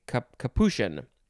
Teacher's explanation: the CH is not actually a ch sound, it's an SH